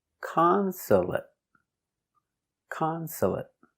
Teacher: A ca m con s console a consul t consulate consulate consulate three syllables the stress is on the first syllable · 3 syllables. The stress is on the first syllable.